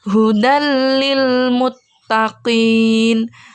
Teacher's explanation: Dal disini berharkat fathah tanwin Kemudian bertemu dengan huruf lam jadi tanwinnya itu sudah tidak terbaca lagi melainkan sudah lebur atau sudah masuk ke huruf lam jadi cara bacanya hudallilmuttaqin nah tidak boleh dengung dan tidak boleh · tidak boleh dengung dan tidak boleh terbaca jelas tanwinnya